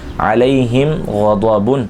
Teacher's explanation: میم ساکن کے بعد جو حرف ہے وہ غین ہے، نہ با ہے نہ میم ہے، اظہار شفوی کا قاعدہ لگے گا، یعنی غنہ نہیں کریں گے